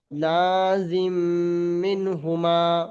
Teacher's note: এই নুন সাকিনের পরে হা এসছে, গুন্না হবে না, ইজহারে হালকি।